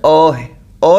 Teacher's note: हिंदी का अ जो है वह मध्य स्वर है